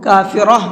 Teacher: کافرہ، را کو پر کر کے پڑھیں گے، اور جب ہم نے یہاں پر آیت کی ہے تو اس کو کافرہ پڑھا ہے ہا کے ساتھ میں، کیونکہ گولتا پر آیت کرتے ہیں تو گولتا ہا بن جاتی ہے۔ اب یہاں پر آیت تو ہے نہیں، تو پھر پیچھے سے لوٹا کر کے پڑھیں گے۔